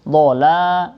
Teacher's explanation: Dhala itu panjang, mat tabi'i dibaca 2 harokat.